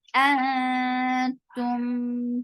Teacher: And the sound is very sharp and short and attached with noon, but there is ikhfad. So you are keeping the sound in your nose, hiding the sound of noon, going towards the makhraj of ta. Antum, for dhamma, circle your lips.